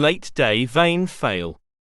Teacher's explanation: This diphthong begins with the same E as in get and men. The sound then glides from a relatively more open to a more closed vowel position.